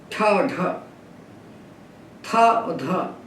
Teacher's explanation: वर्गों के दूसरे और चौथे व्यंजन महाप्राण है क्योंकि उनको बोलने में प्राणवायु को हम ज्यादा फेंकते हैं बाहर